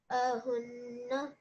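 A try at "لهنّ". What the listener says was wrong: So remember, this is lam. If it was an alif, it wouldn't be attached to this ha.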